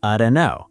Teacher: The T drops, the O reduces.